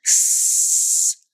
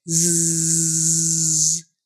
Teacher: S is unvoiced, S, and Z is voiced, Z. You can feel it tickle right here.